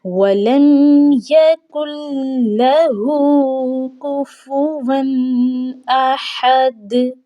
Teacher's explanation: واو پر تنوین ہے اور اس کے بعد حمزہ آ چکی ہے، اور حمزہ حروف حلقی میں سے ہے، اس لیے یہاں پر ہم نے اخفا نہیں کرنا بلکہ ہم نے اظہار کرتے ہوئے پڑھنا ہے۔ کفواً احد، ہا کی ادائیگی بہت ہی خوبصورت انداز میں ہم نے کرنی ہے۔